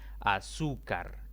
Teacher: es otra palabra de tres sílabas la mayor intensidad cae en la penúltima sílaba contando de izquierda a derecha y como no termina ni nnnn